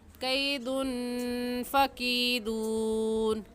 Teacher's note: قیدن کی تنوین پر غنہ کریں کیونکہ تنوین کے بعد حروف ہلکی میں سے کوئی لفظ بھی نہیں ہے